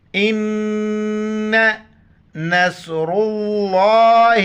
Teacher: ज़बर अ, लाम अलिफ मद ज़बर ला, अला, इन, गुन्ना करेंगे, अमजा को नून के साथ मिलाएंगे, फिर गुन्ना करेंगे, नाक में आवाज़ छुपाएंगे